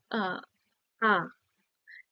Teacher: এক্কেবারে ঠোঁটটা বিস্তার লাভ করছে